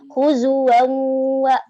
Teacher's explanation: Huzuwan wa itu idgham dia gunnah. Ada tanwin bertemu waw ya. Jadi harus ada gunnah.